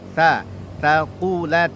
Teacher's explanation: Fa amma man, ikhfa samar ya, ta huruf ta-nya ujung lidah kita berada di antara gigi muka atas dan gigi muka bawah, keluar sedikit dari batas gigi. Ta, taqulat, qafnya tebal, taqulat, dan huruf ta-nya perdengarkan bunyi mahmus atau hamusnya.